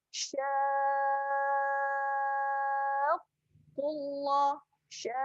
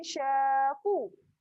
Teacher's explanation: Jangan syaku. Jangan tinggal sabdu tu. Kena tekan qaf.